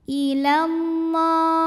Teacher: Lam pada lafaz Allah dibunyikan secara tafkhim sebab huruf sebelumnya berbaris fathah, maka dibacanya ditebalkan